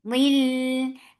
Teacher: Without gunna. It is completely without gunna. You are not keeping the sound in your nose at all. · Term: idgham with gunna. Without gunna